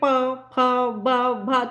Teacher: वर्ग का जब आप उच्चारण करेंगे प फ ब भ तो होठों को टच है ना स्पर्श हो रहा है होठों का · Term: प वर्ग